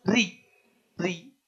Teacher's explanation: ra yang kasrah ya itu tipis